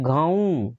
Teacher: એની ઉપર ટપકું છે પણ એની ઉપર મારે ઉચ્ચાર તીવ્ર થતો નથી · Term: લઘુ